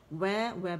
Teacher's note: ٹھیک ہے, پھر ہے و باریک ہے, و اور باریک کرنا ہے اس کو. و زبر کے ساتھ گولائی کے ساتھ ادا ہوگا